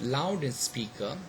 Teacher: and speaker so you know you have got two stress syllables loud is secondary and you know speak receives the primary stress